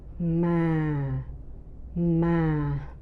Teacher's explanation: the second tone, which is lower, and the third tone, which is higher, compared with the flat tone